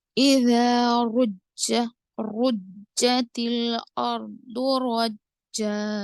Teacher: अलिफ मद्दा करेंगे, रा पे जबर और रा को पुर पढ़ेंगे, जीम पे शद्दा होने की वजह से ये खलखला अकबर होगा, तो यहाँ पर आवाज को आप सख्त करेंगे